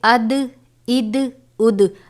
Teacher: ہم اس کو اد اد اد نہیں پڑھیں گے، بلکہ اد اد اد. دال کی آواز لوٹتی ہوئی محسوس ہو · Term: حروف قلقلہ